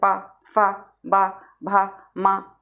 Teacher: फिर ओष्ठ जो है केवल ओष्ठ व्यंजन कौन से होते हैं, पावर्ग ओष्ठ व्यंजन होते हैं। इन व्यंजनों का उच्चारण दोनों ओठों के परस्पर स्पर्श होता है